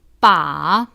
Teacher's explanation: Third tone, falling, rising.